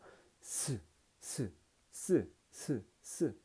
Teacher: 공기의 흐름을 갖다가 아주 적게만 통과하게끔 만들어서 공기에서 공기가 마찰되는 소리를 갖다 통해서 발음되는 거기 때문에 마찰음이에요. 그래서 스, 스, 스, 스, 스 모두 스 하는 마찰 소리가 들리죠.